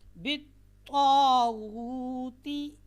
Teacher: طا اور تا کا مخرج ایک ہے، لیکن ان میں جو صفات ہیں وہ الگ الگ ہیں. طا کی جو صفت ہے اس میں ایک صفت اتباق پائی جاتی ہے، جس کی وجہ سے آواز کیا ہے، موٹی ہوتی ہے، کیونکہ زبان تالو کے ساتھ لگتی ہے.